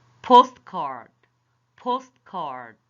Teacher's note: We stress or emphasize or say it more louder, the first syllable of the compound noun